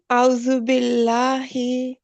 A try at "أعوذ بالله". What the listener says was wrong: ہی اور لائٹ کریں جیسے مخرج اس کا تھوڑا سا نا ڈیپتھ میں ہے. ہی بالکل چیسٹ کے قریب سے آ رہا ہے. اعوذ حمزہ عین احتیاط سے پڑھیں.